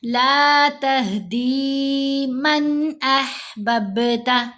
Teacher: با پر کلکلا کریں گے